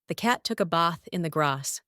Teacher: Second, for the A sound, the Southern British accent splits words like trap and bath into two different vowel sounds · words like bath, grass, laugh, can't, and after take on a completely different vowel, a long open ah sound, a long A